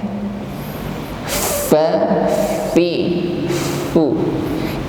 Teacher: Ujung gigi ditempelkan pada bibir bawah yang bagian tengah. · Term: makhraj huruf fa